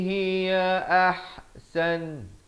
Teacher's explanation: Hiya ini ha pedas di pertengahan kerongkong.